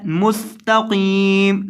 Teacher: وقف کی حالت میں میم کو ساکن کرنا ہے، مستقیم، سین کے اندر سیٹی پیدا کرنی ہے، اور قاف کو لمبا کرنا ہے کیونکہ اس کے بعد یا مدہ ہے۔